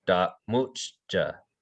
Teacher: it's a glottalized M. So you have like a glottal stop like right before the M.